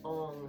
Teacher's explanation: you're making the NG sound with the back of the tongue hitting the roof of the mouth. You should feel a really nice vibration through the heart center, through the skull, connecting the head and the heart, connecting to that energy of the universe.